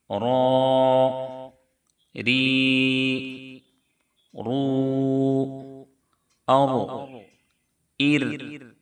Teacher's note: याद रहे कि र की अदायगी में थोड़ी सी तकरार जैसी आवाज यानी जुबान में राश पैदा होगा। और इस तरीके की आवाज निकलनी चाहिए। · یاد رہے کہ را کی ادائیگی میں تھوڑی سی تکرار جیسی آواز، یعنی زبان میں رعش پیدا ہوگا · را کا مخرج ہے زبان کا کنارہ مع کچھ حصہ پشت زبان، جبکہ ثنایا علیہ اور رباعی کے مسونوں سے ملے۔ ثنایا علیہ اوپر کے سامنے والے دونوں دانت کو کہتے ہیں، اور ان کے بغل میں دونوں طرف جو دانت ہیں ان کو رباعی کہتے ہیں۔